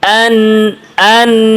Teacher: আন, আনজির, এরকম না। আন, আন সামান্য গুন্না আছে, এবং তাওয়াসসুত সামান্য আওয়াজ জারি